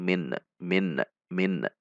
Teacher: saat melepas titik makhraj nunnya terlalu cepat atau mungkin terlalu kasar sehingga menimbulkan bunyi pantulan